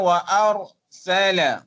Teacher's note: Ra dibaca dengan tafkhim, tebal.